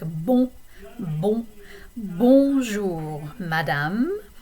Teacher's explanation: you're basically going to take an O, like an O sound, and it's going to kind of filter through your nose a little bit. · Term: nasal vowel